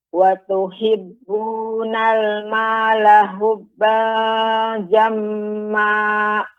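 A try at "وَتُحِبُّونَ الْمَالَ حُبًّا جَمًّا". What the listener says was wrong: Ya, tapi Ibu untuk ha tidak boleh. Untuk ha hubba ini ha kecil ya, atau han yang bagian tengah. Ha bukan ha yang besar, bukan ha, bukan hubba, akan tapi hubba ya.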